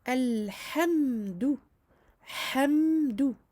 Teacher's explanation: Il faut montrer le mime, ne pas le lâcher trop vite et ne pas le faire s'écouler trop au niveau de la durée. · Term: écoulement partiel du son